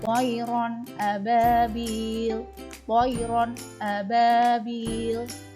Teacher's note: Selanjutnya adalah bacaan idhar halqi. Ketika ada nun sukun atau tanwin bertemu dengan huruf alif, cara membacanya dibaca jelas.